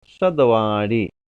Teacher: इसको, इसके उच्चारण में मूर्धा हो जाती है जीभ, और यह दांत स है, दोनों दांतों के बीच में जीभ आती है